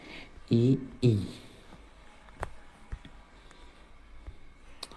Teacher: चौथा तालव्य स्वर जो तालु से निकलने वाले स्वर है।